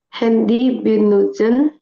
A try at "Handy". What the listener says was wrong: Handi benutzen. Jangan handi ya, jangan handy ya.